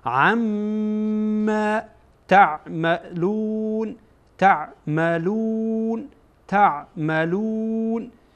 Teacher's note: عین با میم در اینجا وصل میشه و با هم خوانده میشه و میم در اینجا غنه هم میشه